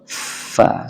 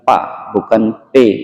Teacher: Fa itu keluarnya dari batnis syafah namanya, perut bibir. Jadi bukan merapatkan keduanya seperti ba dan mim, tapi kalau fa, ya, kalau fa itu gigi seri atas itu menindih bagian merah bibir bawah, bagian merah bibir bawah, fa, sehingga ada hembusan udara yang keras, fa, fa.